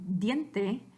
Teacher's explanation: With the D, like in diente, that is a sonido sonoro, meaning your vocal cords do vibrate. So again, the T and the D, both dental, meaning your tongue is on the back of your teeth. They're both occlusive, meaning you can't really make this sound until you stop the air and let it go again.